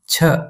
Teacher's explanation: A ch with a puff of air.